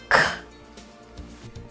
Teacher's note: O dorso da língua se eleva, bate no céu da boca, é um som surdo, sem vibrações das pregas vocais.